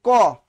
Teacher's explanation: শ্বাস কম লাগে, অল্প প্রাণ